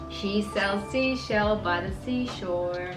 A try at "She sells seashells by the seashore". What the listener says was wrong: You said seashell. Say seashells. She sells seashells by the seashore.